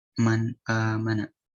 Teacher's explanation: Nun ketemu a, man, mana? Man, jadi nunnya tuh harus ada dengung dikit ya. Soalnya dengung tuh udah ciri khasnya nun.